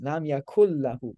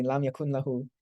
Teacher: lam yakun lahu, but it merges together, so it's lam yakul lahu